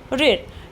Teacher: मूर्धा में जो स्वर है वो सिर्फ ऋ है। ठीक है, ऋ।